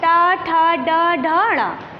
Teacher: जीभ थोड़ा सा मुड़कर हमारे तालू के पिछले हिस्से को स्पर्श करती है, उसे हम मूर्धन्य कहते हैं।